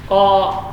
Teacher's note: huruf qaf, syiddah dan jahar. Jadi pangkal lidah menempel pada langit-langit yang lunak. Qa, panjang dua harakat.